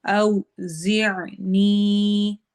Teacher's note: زیع کے آخر میں عین کی آواز کو ہم نے حلق میں ٹھہرانا ہے، حلق کے درمیانے حصے سے